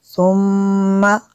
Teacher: میم شدد ہے غنہ بھی کریں گے